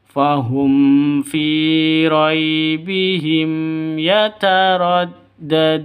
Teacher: mim mati bertemu dengan dengan Fa jelas terang tidak boleh dengung tidak boleh ee panjang Kenapa karena izhar syafawi jelas mim matinya